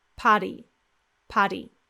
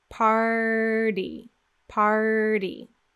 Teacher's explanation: But again, we need to touch the roof of the mouth for that quick D sound as well. So curl back, tight, tight, tight for the R, and then hit the roof for the quick D